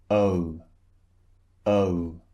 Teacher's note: And as as we've seen before, when we have this kind of vowel, the shape of the mouth changes when you utter the sound. So, first the mouth is relaxed and then it's rounded. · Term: two vowels squeezed together